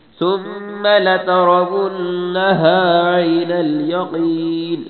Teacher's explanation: ثم پہ غنہ ہوگا میم پہ